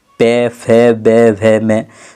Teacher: दोनों होठों के स्पर्श से बोले जाने वाले वर्ण को क्या कहा जाता है, ओष्ठ्य वर्ण कहा जाता है या कहलाते हैं।